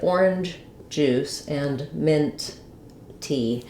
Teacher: So just now when I was saying orange juice, I said orange juice and mint tea, where I clearly articulated the j sound twice and the t sound twice.